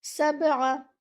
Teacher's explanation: Give your ayn 1 count. Don't stretch the counts of ayn.